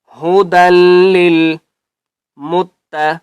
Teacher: دال کو ہم نے لام کے ساتھ ملانا ہے اور مضبوطی کے ساتھ پڑھنا ہے